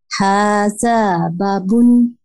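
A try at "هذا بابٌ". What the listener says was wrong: বাতে একটু মাদ হবে,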